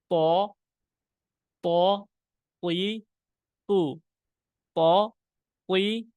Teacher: জিহ্বা কোন বের হবে না জিহ্বা ভিতরেই থাকবে উপরের মাড়ি তে লাগবে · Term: শক্ত হরফ